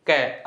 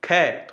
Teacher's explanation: बिल्कुल कम हवा निकली है कै। ख थोड़ा सा जोर लगा, ज्यादा निकल गई।